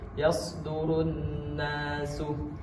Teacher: Ini hukum yang pertamanya adalah izhar idgham syamsiyah karena alif lam ta'rif bertemu dengan huruf nun, tapi alif lam ta'rif itu tidak dianggap, langsung masuk ke hukum gunnah musyaddadah, nun yang bertasydid. Dibaca dua harokat.